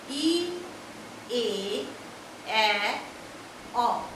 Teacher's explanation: তালব্য ধ্বনি হচ্ছে ই এ এ অ, অর্থাৎ জিভটা তালুর নিচে অবস্থান করে, স্পর্শ করে না, কারণ এটা স্বরধ্বনি, উচ্চারণে বাধা সৃষ্টি হয় না।